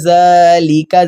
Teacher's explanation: زال پر کھڑا زبر کھینچیں گے